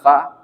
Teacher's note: Fa gigi atas bertemu dengan bibir bawah